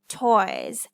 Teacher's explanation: This is the diphthong oi. So after oi, S is saying the Z sound.